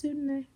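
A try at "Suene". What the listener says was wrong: Why are you adding a D?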